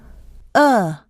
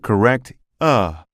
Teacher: you can feel vibration in two places these are in the vocal chords and at the center of your tongue